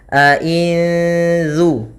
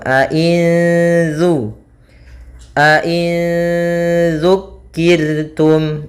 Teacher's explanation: nun matinya disamarkan kepada zal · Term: ikhfa hakiki